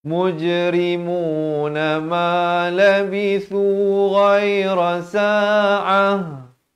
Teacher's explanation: Sekali lagi ta marbutah, kalau waqaf ditukarkan kepada bunyi ha.